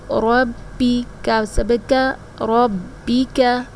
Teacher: اس کاف کو باریک پڑھا جاتا ہے، اس کو ہم موٹا کر کے نہیں پڑھیں گے